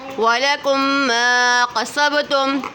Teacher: وَلَكُمْ پہ میم ساکن کے بعد دوسری میم آ رہی ہے تو ادغام شفوی ہو رہا ہے